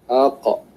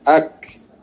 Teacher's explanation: Qaf keluar dari pangkal lidah dan bawah sedikit dari makhraj qaf ialah makhraj kaf. Bawah sedikit maksudnya ke hadapan sedikit lah.